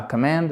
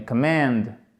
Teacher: Accent tonique, vous voyez, c'est intéressant sur la deuxième partie.